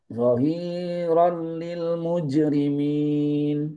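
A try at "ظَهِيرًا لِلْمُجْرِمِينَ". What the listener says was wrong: Baik. Hi-nya jangan terlalu lama.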